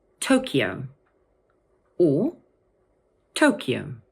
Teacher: In English, this word can either have three syllables and be pronounced Tokyo, or two syllables, Tokyo. So the sound in the middle of the word is slightly different, but the stress is always on the first syllable.